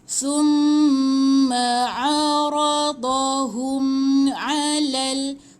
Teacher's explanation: Tahan mim sabdu. Mim sabdu dua harakat, tahan.